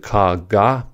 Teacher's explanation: For the /k, g/ pair, the stop happens at the velum. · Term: plosives